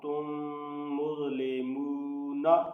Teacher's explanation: اب یہاں میم ساکن کے بعد دوسری میم ہے، اس لیے اس میم پہ ادغام شفوی ہوگا، یعنی یہاں غنہ کر کے پڑھیں گے۔